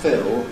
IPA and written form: fɪl (fill)